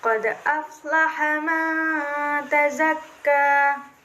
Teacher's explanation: dal sukun ini terletak pada tengah-tengah ayat atau kalimat atau kata, dan cara bacanya pun dipantulkan secara ringan. · Nomor 15 itu hukum tajwidnya ikfa, karena nun sukun bertemu dengan ta dan didengungkan sepanjang 2 harokat. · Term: qalqalah sugro